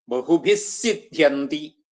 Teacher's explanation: ആ വിസർഗ്ഗം സിദ്ധന്തി എന്നുള്ളതിന്റെ കൂടെ കൂടിയിട്ട് സിദ്ധ്യന്തി എന്നുള്ള സകാര ഇരട്ടിച്ചു വരും